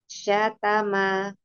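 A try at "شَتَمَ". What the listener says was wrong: Ini diseret, ayo. Satama. Ini kebiasaan kita, kebiasaan bahasa kita itu. Dimelar-melarkan kalau ngomong.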